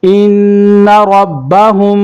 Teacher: میم ساکن کے بعد با آ رہا ہے تو یہاں پہ غنہ ہوگا۔ ہا میم پیش ہم، ان ربہم، با زیر بھی، ان ربہم، یہی غنہ ہے، ہم بھی یہ خیال کرنا ہے، میم ساکن کے بعد با آ جائے تو یہاں پر غنہ ہوگا۔